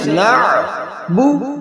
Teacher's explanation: نون کے بعد عین وسط حلق سے